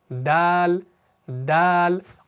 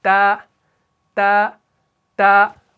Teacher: اور آپ تا پڑھ کر دیکھیں، تا میں وائبریشن نہیں ہوگی، تا، تا، تا، وائبریشن ہوگی لیکن ویسی نہیں ہوگی جیسے دال میں ہو رہی ہے۔ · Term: وائس لیس